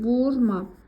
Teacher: Burda vurğu əvvələ düşür